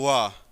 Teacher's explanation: उसके बाद देखिए 9, वकारस्य, दंतौष्ठम, दंतौष्ठम, वकारस्य दंतौष्ठम। वकार का मतलब होता है वा का उच्चारण स्थान, दंतौष्ठ है